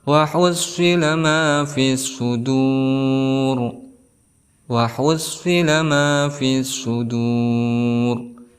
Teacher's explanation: ada alif lam yang tidak dibaca jelas, maka dihukumi sebagai al-syamsiyah. Kenapa? Karena ada huruf alif lam bertemu dengan salah satu huruf al-syamsiyah yaitu shad.